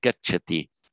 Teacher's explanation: Stress isn't that important in Sanskrit, but if a gachati, the stress would tend to fall more on the first syllable. A very light stress, gachati.